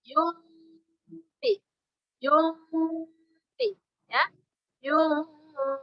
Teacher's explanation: Dibacanya samar, tidak 100% samar disertai dengung. Lidah kita menjemput huruf yang di depannya. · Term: ikhfa